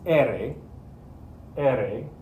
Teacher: the tip of your tongue is only going to flap once when you say the letter.